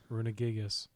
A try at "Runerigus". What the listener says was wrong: It's not a Gigas. Runeregis. Runeregis. Runeregis. Runerigus. Runeregis. Runeregis. There's 2 R's. Runeregis.